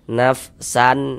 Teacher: Nah, karena dia izhar maka dibaca jelas dan tidak berdengung. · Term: izhar halqi